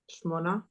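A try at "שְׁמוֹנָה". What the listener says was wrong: It's a little counterintuitive, but yeah.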